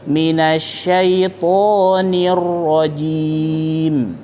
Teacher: ro harus ada getarannya ya karena dia punya sifat takrir yaitu bergetar ya atau mengulang